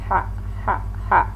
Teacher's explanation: Ha ini makhrajnya adalah khalqi atau tenggorokan bagian tengah. Ha ha ha. Dan dia pun alhamas, ada udara atau napas di saat kita mengucapkan ha ini yang keluar.